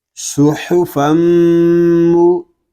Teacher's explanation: فا میم دو زبر فم، سحفم. میم شدد ہے، سو غنے کے ساتھ پڑھیں گے